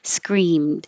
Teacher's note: You don't have to release the D. Screamed. You'll hear the D if there's a vowel after it.